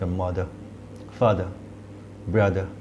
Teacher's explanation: ব্রিটিশরা অনেক ক্ষেত্রে আরের উচ্চারণ করে না, মানে একটা আ টাইপের উচ্চারণ করে ছোটো করে। তো সেই ক্ষেত্রে এই শেষ আয়ের জন্য মূলত আমরা এই সিম্বলটা ইউজ করি, মাদার, ফাদার, ব্রাদার, it's like that.